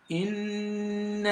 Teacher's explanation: For you to be able to pronounce the noon mushaddada very well, you've got to assume you're pronouncing one silent noon and another noon with fatha. And so then the noon gets elongated for up to 5 seconds. · the noon gets elongated for up to 5 seconds. So this is called al-maddu al-jaiz al-munfasil.